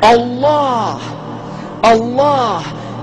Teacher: It begins with a hamza, which is at the deepest articulation of the throat. And this is where the name of Allah is emanating from the point in which human vocalization is possible.